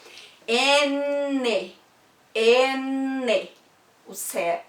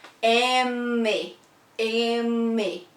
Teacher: a gente não fecha a boca, a gente põe a língua no céu da boca